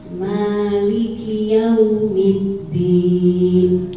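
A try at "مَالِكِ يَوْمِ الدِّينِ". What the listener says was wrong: Nggih, ini juga Masya Allah. Nah, seperti itu nggih.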